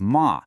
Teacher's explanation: That's ma, with a tone that dips down and comes back up.